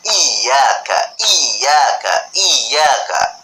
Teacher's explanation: karena di sana itu huruf ya itu pakai tasydid, maka kita membacanya harus i-nya itu harus dua.